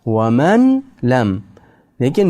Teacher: Lekin nun harfni lam harfi ichiga tiqib yuboramiz. Kirgizib yuboramiz.